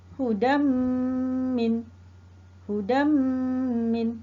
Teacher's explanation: Tanwin bertemu dengan huruf mim. Bermakna hendaklah dibaca dengan dengung. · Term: idgham ma'al ghunnah